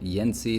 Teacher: the reason that the ah raises is because it was before a nasal